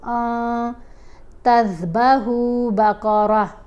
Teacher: یأمرکم ان تذبحوا بقرہ، نون کے اوپر ہم نے اخفا کیا، نون کی آواز کو ہم نے واضح کر کے نہیں پڑھنا، ناک میں چھپا کر پڑھنا ہے نون کو